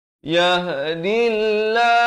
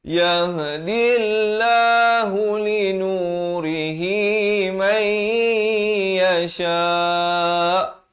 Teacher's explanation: Lafz jalalah dibaca nipis, 2 harakat